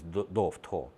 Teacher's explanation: В мигрельском происходит оглушение в «тхо», из «до» в «тхо».